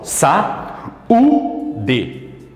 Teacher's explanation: o u é forte tanto que leva até acento aqui Existe uma separação entre eles eu falo sa u de então o u não é semivogal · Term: iato